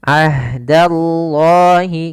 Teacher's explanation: lafal Allah maka di sini dinamakan eh dengan lamut tafkhim yaitu lam yang dibaca dengan tebal lafal Allahnya yaitu lam tebal